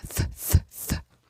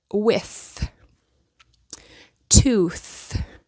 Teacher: here you'll put your tongue between your teeth fth th and when you touch your throat and make the sound th thth you will not feel vibration